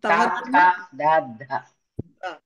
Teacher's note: దంతాల సహాయం తోటి పలికేటటువంటి ఏవైతే అక్షరాలు ఉన్నాయో అవి దంత్యః